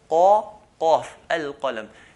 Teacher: qaf is right at the back, near the throat